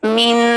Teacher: जबान की जो टिप है ऊपर तालू में जाके टच होती है और मुंह का रास्ता बंद हो जाता है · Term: نون ساکن